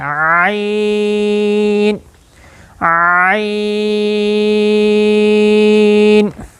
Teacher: عین یہ وسط حلق سے ادا ہوتا ہے